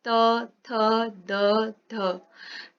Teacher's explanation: जिनके उच्चारण में जिह्वा दांत से लगती है, दांत के पिछले भाग से। दंत मतलब दांत के पिछले भाग से जिह्वा लगती है, जिसे हम बोलते हैं त वर्ग।